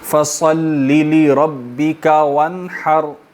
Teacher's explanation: فصلی، فصل صاد کو کلیئر کریں گے، ٹھیک ہے. سین جو ہے اس سے تھوڑا اوپر سے صاد نکلے گا سیٹی، مختلف سیٹی کے ساتھ